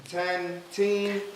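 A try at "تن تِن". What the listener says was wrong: Tan tin. Tan. No, tan tin. Not teen. Tin. Tin. Tan tin.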